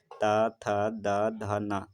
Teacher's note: हैं तो आपका जीभ जो है आपके दांत से टकराता है आपका जीभ आपके दांत से टकराता है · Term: दंत व्यंजन